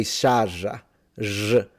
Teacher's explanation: Some Sicilian pronounce, depending on the area, instead of trilling or rolling the R, they pronounce them like a J.